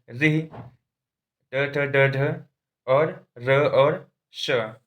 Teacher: इन वर्णों का उच्चारण स्थान भी मूर्धा है